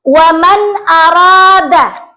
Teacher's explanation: jadi dibaca jelas ada nun sukun bertemu dengan alif atau hamzah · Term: izhar